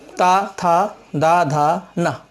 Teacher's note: जीभ का दांत से टच होना, स्पर्श करना इसकी सबसे बड़ी विशेषता है, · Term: दंत ध्वनियों